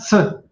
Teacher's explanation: Quand vous dites T et que vous ajoutez un souffle à votre Te, ça devient Se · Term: un T avec un souffle